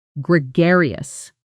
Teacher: Gregarious. The stress is on the second syllable. Gregarious.